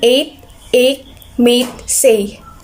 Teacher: mid front tense vowel in eight, ache, mate, say